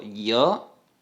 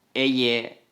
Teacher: En la pronunciación hay una vibración de las cuerdas vocales, se abre bastante la boca y el sonido es similar al de la Y.